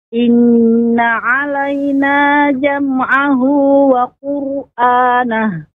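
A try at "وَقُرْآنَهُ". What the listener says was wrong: Ya, ketika qur kembali lagi ke semula. Qur hanya qafnya saja monyong sedikit, balik lagi. Qur'anah, tidak tidak monyong terus ya. Jadi qur'anah.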